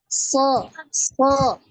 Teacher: dia keluar dari cela-cela antara gigi seri atas dan gigi seri bawah